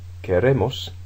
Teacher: You've got quiero, quieres, quiere, and then queremos, the stress has shifted onto the ending.